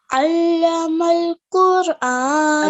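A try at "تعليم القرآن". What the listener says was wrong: Okay, do it quite strong. You can do it slightly stronger than that. And so just remember, where there's an ayn, you recite it as an ayn, not an a, okay?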